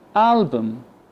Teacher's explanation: So the U replaced with the schwa. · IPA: ə